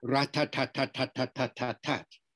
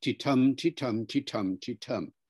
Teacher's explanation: the difference technically is called a syllable timed English versus a stress timed English